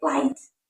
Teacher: Clear at the beginning of the word, for example, light. Pronounced with the front of the tongue raised higher.